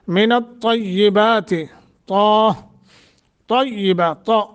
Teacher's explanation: من الطیبات، طیبات، طیبات نہیں طیبات، اور تھوڑا مضبوطی کے ساتھ چونکہ یا مشدد ہے، 2 حرفوں کے قائم مقام پڑھا جاتا ہے